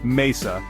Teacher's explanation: notice how the stress Falls naturally on the second to last syllable